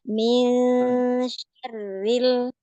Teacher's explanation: ketika ikhfa, ya suaranya kita dorong ke depan biar shinnya si ikhfanya tipis.